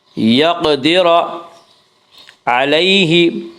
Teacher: یقدر علیہ یالین وہ یا جو ساکن ہو اور اس سے پہلے زبر ہو یالین کو نرم آواز کے ساتھ جلدی پڑھیں گے